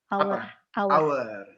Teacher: it's preceded with a letter H, but the H is not pronounced